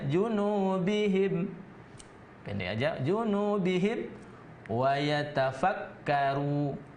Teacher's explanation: Bihim itu ada hukum mim. Mim di situ karena mimnya mati diikuti oleh huruf waw. Maka itu tidak dengung, dia jelas saja. Maka disebut dengan idhar safawi.